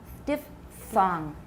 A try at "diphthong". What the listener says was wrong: Not D. It's di. Once more.